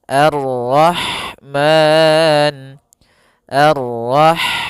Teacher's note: Kemudian di sini ada huruf ha. Ha dia memiliki sifat hamas, yaitu maka harus mengalirnya nafas